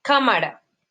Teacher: Tienen el acento en la antepenúltima sílaba. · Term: esdrújulas